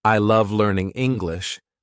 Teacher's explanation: in the sentence I love learning English native speakers naturally stress the words love and English · native speakers naturally stress the words love and English. These words carry the main meaning, while I and learning are less emphasized.